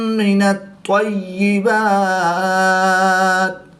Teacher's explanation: طا حروف مستعلیہ میں سے ہے تو اس کو پر یعنی موٹا پڑھیں گے۔ حروف قلقلہ میں سے بھی ہے، اور جب حروف قلقلہ مشدد ہوں تو ان میں قلقلہ خوب جماؤں کے ساتھ کریں گے، اس کو قلقلہ کبریٰ بھی کہتے ہیں۔